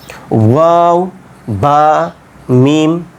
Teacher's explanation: তারপরে দেখেন ওয়াও, বা, মিম, এই তিনটা উচ্চারণ দুই ঠোঁট থেকে উচ্চারিত হয়।